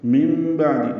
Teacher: نون ساکن کے بعد با آنے کی وجہ سے اقلاب ہے، اس لیے چھوٹی سی میم لکھ دی گئی ہے، نون کی جگہ میم ہی پڑھیں گے